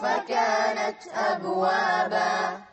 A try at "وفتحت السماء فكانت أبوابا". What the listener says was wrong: أبوابا لا قلقلة هني.